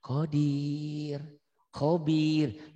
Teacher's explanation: Ya mati. Bila diwakofkan, dihentikan dibacanya jadi tipis. Karena didahului oleh ya mati nih.